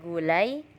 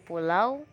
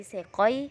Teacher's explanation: vokal yang kedua diucapkan dengan posisi lidah menjadi lebih tinggi daripada yang pertama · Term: diftong naik